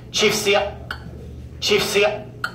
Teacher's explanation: there's a guttural throat stop and a bit of a click in there